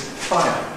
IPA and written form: ˈfaɪə (fire)